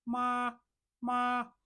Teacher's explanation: the highest pronunciation comes from the first one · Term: first tone